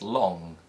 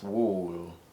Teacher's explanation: the light L sound at the beginning of words such as long, and the dark L sound at the end of words such as wool. These are called complementary allophones, and if we swap them, they are still interpreted as the same phoneme by the listener, but they sound slightly strange.